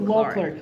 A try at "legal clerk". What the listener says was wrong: Sorry, it's clerk, not clock.